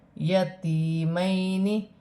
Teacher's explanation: یا ساکن سے پہلے زیر ہے، یا مدہ بنے گی، ایک الف کی مقدار کھینچ کے پڑھا جائے گا